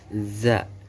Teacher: Yang ke-11 ujung lidah berada pada halaman gigi seri bawah sehingga suara za sehingga keluarnya za keluar di antara dua gigi seri atas dan bawah